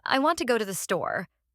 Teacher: in the sentence, I want to go to the store, the words want, go, and store are stressed. The other words are unstressed and spoken quickly. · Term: rhythm and stress